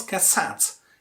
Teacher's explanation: when you pronounce cassette, you stress the second syllable